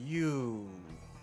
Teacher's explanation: 物这个音是属于闭后圆唇的母音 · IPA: u